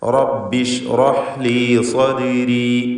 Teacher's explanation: തഫ്ഖീം ചെയ്ത് ഉച്ചരിക്കണം. ദാലിന് ഖൽഖല സുഗ്റ നൽകി ശബ്ദം ഹറക്കത്ത് പോലെ സുക്കൂൻ ചലിപ്പിച്ചുച്ചരിക്കുക.